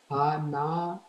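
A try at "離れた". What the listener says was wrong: Perfect. Hanareta.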